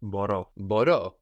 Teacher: this verb has the accent on the end